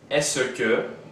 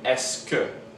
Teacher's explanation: in fluid speech, we often drop that E between ce and que, making est-ce que.